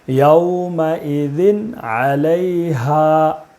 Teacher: تنوین کے بعد حروف حلقی کے 6 حرفوں میں سے عین ہے، اس لیے تنوین کو بغیر غنہ کے جلدی پڑھیں گے